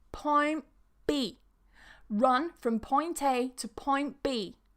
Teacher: we're cutting the T and we're changing that N into a P